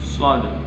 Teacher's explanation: Huruf shafir dia harus dibaca dengan ada suara menyeruit. shad. Huruf isti'la juga dia membutuhkan dengan bibir yang agak ke atas atau manyun.